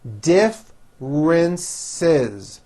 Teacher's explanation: r she works for a huge corporation differences three syllables and the second syllable begins with a strong r